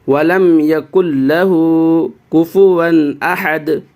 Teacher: کاف کو لام سے ملانا ہے، کیونکہ نون کو نہیں پڑھیں گے، کیونکہ کاف کے بعد نون کے اوپر ساکن ہے لیکن اس کے بعد تشدید ہے، تو تشدید والے سے ملائیں گے اس کاف کو، اس تشدید سے، یعنی لام کے اوپر جو تشدید ہے اس سے ملائیے۔